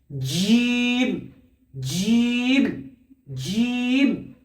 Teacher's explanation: জিম উচ্চারণ হয় জিভের মাঝখান আর তার সোজাসুজি উপরের তালু, এই তালুর সাথে জিভের মাঝখানটা লেগে জিম উচ্চারণ হয়।